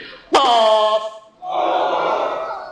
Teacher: জিহ্বার শেষ ভাগ উপরের তালুর সাথে লাগবে